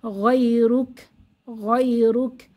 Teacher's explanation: কাফের উপরে সাকিন হলে সেখানে একটু হামস বা বাতাস বের করে পড়তে হয়।